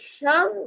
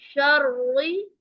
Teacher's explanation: را مشدد حرف ہے اور را کے نیچے زیر ہے، اس لیے ہم اس کو باریک پڑھیں گے، موٹا کر کے نہیں پڑھیں گے